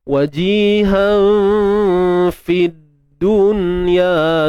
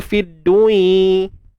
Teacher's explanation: Nun mati bertemu ya dalam satu kalimah ni tuan-puan, dia takkan jadi idgham bi gunnah.